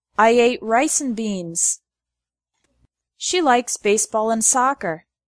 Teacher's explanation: The word and often becomes n.